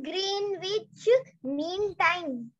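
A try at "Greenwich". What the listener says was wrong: It's नॉट ग्रीनविच, it's ग्रीनिच। Spelling I नो, it's W is written but W is silent, so it's बोलो ग्रीनिच, ठीक है? W is silent in this, okay?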